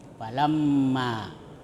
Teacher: Nah, situ ada mim bertasdid. Nah, itu hukum bacaannya gunnah. Gunnah itu mendengung.